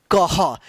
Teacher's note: यानी क के बाद ह का उच्चारण होगा यानी इस विसर्ग का क्या उच्चारण होता है ह होता है